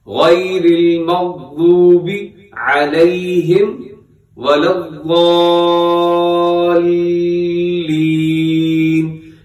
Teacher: حرف ضاد ہے، اس کو آپ نے موٹا پڑھنا ہے، ہر صورت میں موٹا پڑھا جاتا ہے